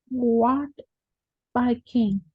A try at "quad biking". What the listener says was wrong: Quad biking. No, we don't say what. We say quad. Quad biking. Quad bike.